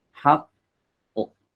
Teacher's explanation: Haq ini kan naik nih, belakang lidahnya naik. Haqqu. Jadi dia tetap naik ya.